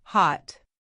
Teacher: The O sound in hot isn't round. It's low and strong, hot.